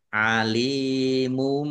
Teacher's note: lam kasrah ya sukun mad thobi'i panjang dua harakat